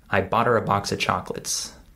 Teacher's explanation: instead of saying I bought her I say I B I skip the H sound in the word her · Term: reduced speech